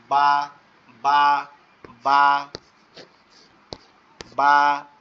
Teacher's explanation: বাটা হবে দুই ঠোঁট হালকা লেগে আবার পৃথক হয়ে যাবে